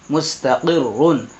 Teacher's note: را دو پیش رن، مستقرن. تو یہاں را پور ہوگی. کیونکہ رائے مشددہ پر پیش آ رہا ہے، اس لیے یہاں را پور کر کے پڑھیں